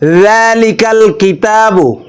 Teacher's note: নরম করে উচ্চারণ করতে হবে এই জালের উচ্চারণও জিহ্বার আগা সামনের জিহ্বার আগা সামনের উপরের দুই দাঁতের আগার সঙ্গে লাগিয়ে নরম করে উচ্চারণ করতে হবে হবে জিহ্বার আগা সামনের উপরের দুই